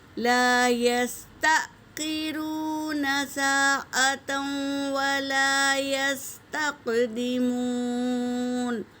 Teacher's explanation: یہاں پر حمزہ ساکنہ ہے تو جھٹکا دے کر پڑھیں گے